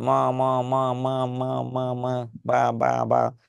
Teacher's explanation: দুই ঠোঁটের সংস্পর্শে যে ধ্বনিগুলো উচ্চারণ হয় তার নাম হচ্ছে উষ্ঠবর্ণ